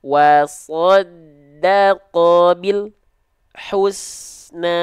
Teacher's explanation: antara bunyi lam Al dengan bunyi Hu itu enggak boleh ada Jedah